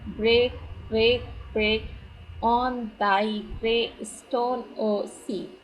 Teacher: In this line, every syllable is accented. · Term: Spondylic meter